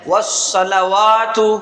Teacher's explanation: تو یہاں پر واو کو ایک الف کے برابر کھینچ کے پڑھا جائے گا، تا کو بغیر کھینچے پڑھا جائے گا۔